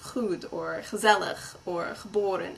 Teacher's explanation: that gargly noise in the back of the throat